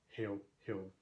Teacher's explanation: we have just two stress syllables, hail and hild. They alliterate with each other, of course, hail, hild.